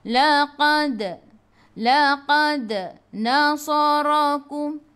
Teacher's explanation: dal ada sukun, kena melantun, lantunannya kecil. Qalqalah sughra.